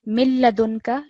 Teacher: this is complete assimilation so you completely merge the sound together